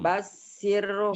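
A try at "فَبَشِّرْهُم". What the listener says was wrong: Shin. Hutang shinnya. Pabashirhum Fabashirhum bi azabin alim.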